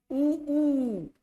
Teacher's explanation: पूरा होठ बाहर आ जा रहा है उ तो उ का उच्चारण खाली ओष से होता है ये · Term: ओष्ठ